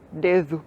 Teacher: Os dois, por exemplo, na palavra dedo, que em português europeu é dedo. Então o som d entre vogais no português europeu é th.